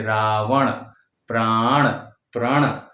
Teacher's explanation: उच्चारण इसका होता है ण, यानी बड़ा र और नासिका से चंद्र बिंदु उस पे लग जाता है, उस तरह से आवाज निकालनी है ण।